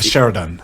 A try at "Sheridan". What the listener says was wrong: Oh, I would have said it with more of a C or a K sound.